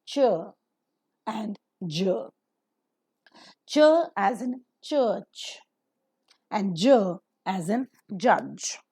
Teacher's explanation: These two are a combination of t and sh sound, d and j sound. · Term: affricates